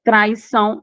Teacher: Traição já é ditongo, em que o A é a vogal e o I é a semivogal, formando um ditongo.